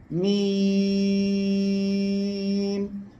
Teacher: মিম অক্ষরে চার আলিফ টেনে পড়তে হবে